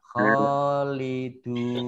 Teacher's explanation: khalidun mat arid lis sukun dibaca 6, 4 atau 2 harokat.